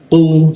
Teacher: Ku diisi ke tenggorokannya. Kita naikkan ku-nya itu sehingga tidak ada hembusan udara ketika membaca ku.